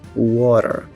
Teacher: quando eu tenho aqui um encontro entre a letra T e duas vogais, a tendência é que esse som ele seja mudado para um D ou para um R. Então, pegando aqui de novo o gancho da palavra water, em inglês americano é mais comum você ouvir water. · o T, que vai ser pronunciado quase como um R, e também o R do final da palavra, que ele é forte, ele vai ser pronunciado